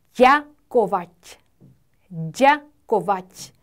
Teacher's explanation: 무려 단어 하나에 경국음이 2개나 있어서 혀를 붙였다가 뗐다가 또 붙여야 돼요. 그래서 ďakovať, ďakovať 이렇게 발음합니다.